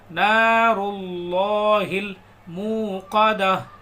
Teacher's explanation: last میں ہا کی آواز آئے گی، تا نہیں پڑھیں گے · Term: ہائی ساکنہ